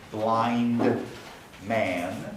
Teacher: we delete d when it's between a nasal and a voiced consonant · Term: deletion